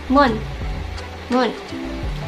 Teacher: kita saat mengucapkan huruf M itu bibir dua-duanya tertutup